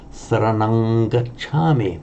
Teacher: So the default mode is saranang, but here it remains a ng because that glides into the following sound.